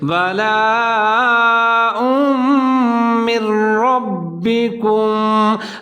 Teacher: اب حمزہ کے اوپر دو پیش ہے، آگے میم کے اوپر تشدید ہے، تو دونوں ملا کے پڑھیں گے، اور ہم جہاں پر غنہ کریں گے، ادغام کریں گے، آواز کو 3 سے 4 سیکنڈ تک ناک میں لے جائیں گے